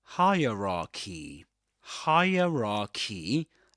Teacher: the trick is to pretend that the first syllable, the first part is higher. Higher.